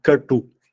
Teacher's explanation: Com U, não. U é curto, né? Mas o T é cerebral. Então, Katu.